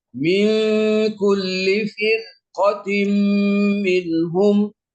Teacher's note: Jadi karena ada ilat, ada alasan ro sukun yang diiringi ataupun diikuti oleh huruf yang berupa huruf isti'la, maka ro yang sukun tersebut sekalipun didahulukan oleh huruf berharokat kasroh, maka ro itu mesti dibaca dengan tafkhim atau tebal